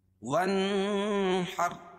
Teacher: نون ساکن کے بعد حروف حلقی کے 6 حرفوں میں سے ہا ہے، تو یہاں ظاہر کر کے پڑھیں گے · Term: اظہار حلقی